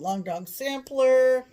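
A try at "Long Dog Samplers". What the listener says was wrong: I know, but you forgot the S. It's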